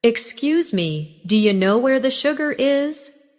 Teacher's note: Notice how do you changes to dia.